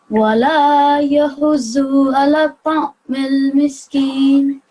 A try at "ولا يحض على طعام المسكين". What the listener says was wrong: Now you joined that again, so it's ta'amil miskin.